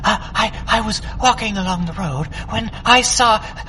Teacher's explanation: a character who is a fast speaker in a high pitch and is a bit breathy